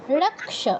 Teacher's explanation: ক্ষীয়ের উচ্চারণটা কয় হসন্ত আর স